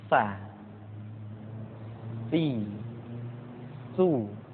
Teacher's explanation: Di antara sifat yang menonjol ketika kita mengucapkan huruf sa atau huruf sin adalah sifat as-safir, di mana ketika kita mengucapkan huruf sa ada suara tambahan yang menyerupai dengan suara belalang. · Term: sifat asfir